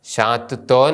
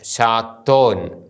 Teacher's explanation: താവും തേസും കൂടി ഒന്നിച്ച് ഇരട്ടിച്ചാണ് ഉച്ചരിക്കുന്നത്